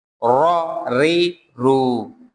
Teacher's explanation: جب را کے ساتھ زیر آئے گا تو ہلکا پڑھا جائے گا، اور زبر اور پیش کے ساتھ موٹا پڑھا جائے گا